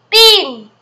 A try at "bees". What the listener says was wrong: It's not bean, it's bees. The word's S.